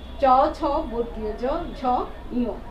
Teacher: চ ছ বর্গীয় জ ঝ ইয়, তালু থেকে উচ্চারণ হচ্ছে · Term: তালব্য ধ্বনি